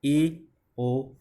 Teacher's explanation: जिन स्वरों के उच्चारण में मुख द्वार आधा खुलता है। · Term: अर्धवृत्त